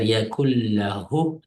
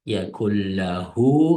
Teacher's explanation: Yakullahu desak ikki harf bo'ladi. Demak, ikki harf miqdorda buni suzish kerak. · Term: vav sag'ira